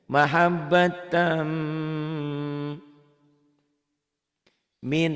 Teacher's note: Ada dengungnya, ada dengung ke hidungnya dan ada ditahan, ada panjangnya. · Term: idgham bigunnah